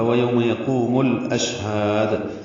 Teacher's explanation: یقوم و مدہ ہے، قو قاف پر پڑھیں گے، وہ میں ہونٹ گول ہوتے ہیں